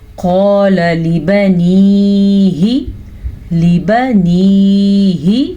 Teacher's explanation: قاف کو پر کر کے پڑھیں گے موٹا پڑھیں گے الف مدہ کے ساتھ پڑھیں گے اور لام کو کھینچ کے نہیں پڑھیں گے اور لام ہمیشہ باریک پڑھا جاتا ہے.